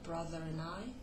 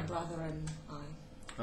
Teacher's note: Brother in non-rhotic varieties of English wouldn't have the r sound on the end pronounced, but then it is reintroduced to make the link. · linking r, the r sound, in non-rhotic varieties of English, such as Australian or standard RP British English, before a vowel sound. That would be my brother and I.